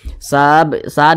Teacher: sa sa dibaca panjang ini namanya Mad Arid l suukun